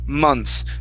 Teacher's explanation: so the way that we actually pronounce this we drop the th